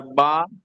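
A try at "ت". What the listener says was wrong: বা না, বা না, এটা তা।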